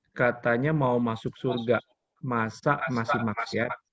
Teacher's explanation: kita ngomongnya ditekan kuat kalau kata masa